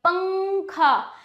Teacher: अंग का उच्चारण नाक से अधिक होता है।